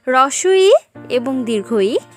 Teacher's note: হ্রস্ব ই এবং দীর্ঘ ই, যেগুলোর উচ্চারণ স্থান তালু